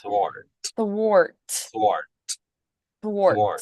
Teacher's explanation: a sharp T not a th correct wart Dart and then the th at the start is unvoiced but then the T at the end a nice crisp t